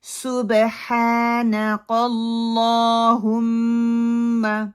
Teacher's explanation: سین کی وسلی ساؤنڈ آنی چاہیے، پیش لائٹ ہونی چاہیے